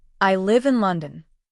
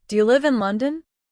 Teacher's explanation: falling for statements rising for yes/no questions